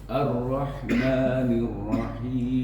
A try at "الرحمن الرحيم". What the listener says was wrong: Lebih tebal ro-nya Pak. Kalau Pak Wahyu membaca ro yang seperti ini, jadi takrirnya itu berlebihan. Ar-Rahmanir-Rahim, kayak orang Inggris kan. Ar-Rahmanir-Rahim. Jadi lidahnya itu hanya getarannya tidak berlebihan, nah, tapi getarannya itu cuma sekali saja, r, ro, r, jadi sekali saja, ar-roh.